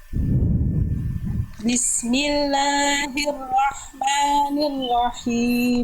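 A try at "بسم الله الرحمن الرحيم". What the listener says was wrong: La dan mannya disempurnakan dua harakatnya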